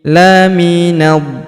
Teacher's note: Huruf na langsung sambung masuk ke huruf d yang berharakat tasydid. Kita tahan dan tekan karena terdapat tanda tasdid di sini.